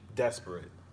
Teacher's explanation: a dactyl is a stress sound at the beginning of the word and then two unstressed syllables so an example that would be desperate the first part of